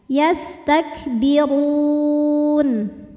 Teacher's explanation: Mad tabi'inya adalah waw sukun didahului harokat dhammah, kemudian huruf yang disukunkannya adalah nun. Ketika berhenti ra-nya panjang, boleh 2, boleh 4, juga 6 harokat asal harus konsisten dalam sekali bacaan. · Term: mad arid li sukun